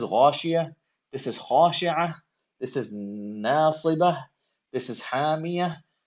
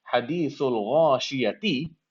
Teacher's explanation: Okay, so for each of these, now regardless of what the diacritic on the ta marbuta is, if you're stopping at the ta marbuta, then you are going to turn the ta marbuta into a ha